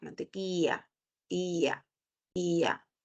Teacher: El yeísmo es porque en vez de pronunciar la EY, que es como una sonrisa y la salida del aire es por los laterales, nosotros lo convertimos en Y